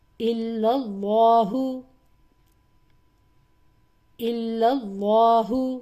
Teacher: اللہ کا لام موٹا پڑھا میں نے کیونکہ پچھلے حرف لام پر زبر ہے، اوپر والی حرکت ہے اس لیے.